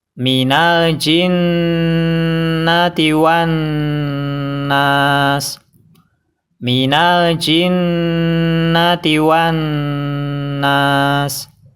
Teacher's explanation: ketika kita mengucapkan nun yang bertasdid, bibir harus dalam keadaan terbuka. Kemudian kita tekan nunnya dan kita tahan 2 harokat.